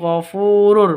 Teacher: fu memiliki panjang dua ketukan karena terdapat waw senyap yang didahului oleh dammah. Mad Asli atau Mad Thabi'i.